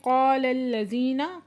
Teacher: قا پہ علی مدہ دو حرکت کھینچ کے پڑھیں گے ، قاف حروف مستعلیہ میں سے پورا آواز سے پڑھا جائے